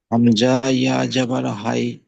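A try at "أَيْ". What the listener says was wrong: জাবার হাই নয়, আই আই। হামজা উচ্চারণ উচ্চারণ হয় হামজা ইয়া জাবার আই।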